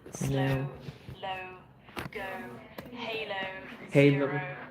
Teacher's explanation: this is actually a diphthong where there's actually almost two sounds within the vowel, and the vowel changes over time. That's what a diphthong is.